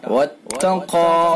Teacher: قاف کو پر کر کے پڑھیں گے، پر یعنی موٹا، منہ بھر کے